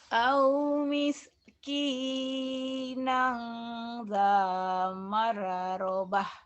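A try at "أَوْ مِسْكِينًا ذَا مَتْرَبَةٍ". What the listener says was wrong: Bukan marobah, matrobah. Taknya mati. Ada tak mati.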